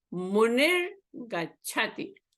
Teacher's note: But here, the Visarga is preceded by E. So the Visarga is replaced by a Refa.